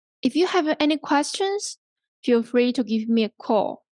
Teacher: So for the conditional clause here, you use a rising tone.